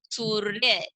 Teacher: तो र का रूप क्या है, ये इसको क्या बोलते हैं, ये है रेफ की मात्रा, और इसका उच्चारण स और य के बीच में किया जाएगा, और जो र की ध्वनि है वो आधी तरीके से ही सुनाई देगी